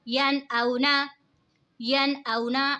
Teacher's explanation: اب دیکھیں ہم نے یہاں پہ غنہ نہیں کیا کیونکہ نون ساکن کے بعد حروف ہلکی کا حمزہ آ رہا ہے تو یہاں پہ اظہار ہوگا یعنی غنہ نہیں کریں گے، نون ساکن کی آواز کو ظاہر کر کے پڑھیں گے